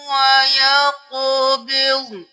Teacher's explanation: وَيَقْبِضْ قاف قلقلہ ضاد موٹا